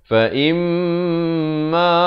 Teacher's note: im itu mim sabdu, jangan lupa dengungkan 2 harakat. Ma dibaca 2 harakat.